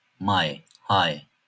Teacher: A harfinden sonra i harfi geliyorsa ay gibi okunur.